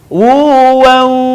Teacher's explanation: tanwin yang berwarna bertemu dengan huruf wau dan huruf ya maka lebih sempurna pengucapannya ketika suara kita keluar dari rongga hidung sebagiannya